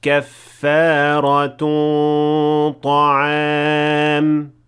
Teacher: The غنة here is full mouth because the letter that comes after it is ta, which is a full mouth letter. So in order to merge them properly, you have to make the غنة also in full mouth.